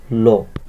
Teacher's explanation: দুই পাশ থেকে বায়ুটা নির্গত হবে, এই পাশ থেকে এই পাশ থেকে, ঠিক আছে। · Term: পার্শ্বিক ধ্বনি